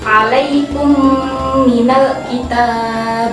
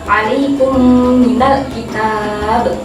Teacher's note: Nah, di situ ada mim sukun bertemu dengan mim, dibaca dengung. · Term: idgham mimi